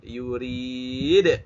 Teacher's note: ada dalnya qalqalah ya, maka itu harus dipantulkan suaranya.